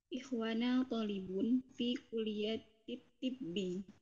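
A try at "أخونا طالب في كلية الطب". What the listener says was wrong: Ikhwana atau akhuna? Perhatikan di sini. Akhuna. Akhuna. Akhuna talibun. Jadi Afwan tadi ana dengarnya ikhwana, mungkin ana salah dengar ya. Akhuna talibun fi kulliyatit tibbi.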